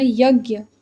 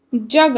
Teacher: य के स्थान पर ज का प्रयोग होता है।